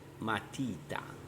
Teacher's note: Piane l'accento cade sulla penultima sillaba